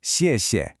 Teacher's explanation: a falling fourth tone followed by a light neutral tone.